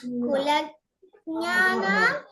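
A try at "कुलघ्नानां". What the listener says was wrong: కుల జ్ఞానం కాదు, కుల ఘనానాం. జ్ఞానద్దు, ఘన. ఘాకి నా ఒత్తు. కుల ఘనానాం. ఘన. జ్ఞ కాదు, ఘన. ఘనానాం. ఘనా అనాలి.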